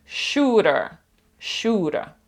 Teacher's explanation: оце R на кінці американці проговорюють